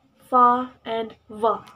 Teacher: These consonant sounds are produced by contacting the lower lips with the upper teeth, as in sound fa in the word fifth, and also the sound va, for example, in the word five. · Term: labiodental sounds